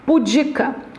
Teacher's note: a sílaba tônica é a penúltima